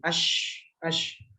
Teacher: udara atau suara itu menyebar di rongga-rongga mulut sehingga menimbulkan suara yang berdesis